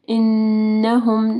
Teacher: نون مشدد ہے، یہاں پہ غنہ ہوگا.